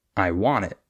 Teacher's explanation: For example, instead of saying, I want it, what we would say is, I want it, in most cases. So instead of stressing the I, we would stress the want.